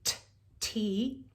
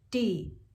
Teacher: if you keep your tongue in the same place but you add your voice it's d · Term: voiced